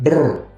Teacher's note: Jadi bernya itu di mulutnya itu dibiarkan bergetar.